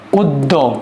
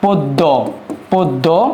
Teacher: এ উদ্যটার প্রথম বর্ণ হচ্ছে অ। অ যদি থাকে এটার পরে জফলা যুক্ত ব্যঞ্জন বর্ণ থাকলে সে অ এর উচ্চারণটা হবে ওকারের মত। যেমন এখানে এটার উচ্চারণ হবে উদ্য। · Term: আদ্য অ